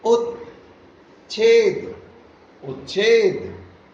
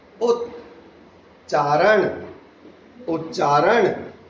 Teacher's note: यदि त या द के बाद च या छ आए तो त या द च में बदल जाता है